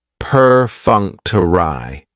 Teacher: Next is a very cool word, peruncter. Prefuncter has four syllables and the stress is on that second syllable, that funk.